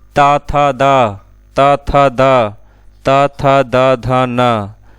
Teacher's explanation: ता का उच्चारण स्थान दंत होता है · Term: दंत वर्ण